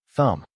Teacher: The symbol is the voiceless th of think. Uh is the vowel of cup and the final completes thumb.